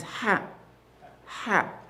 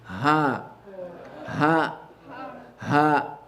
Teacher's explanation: You see the difference? The first one is ha. Ha. From the middle of the throat. The second one is from deeper down the throat, close to the chest.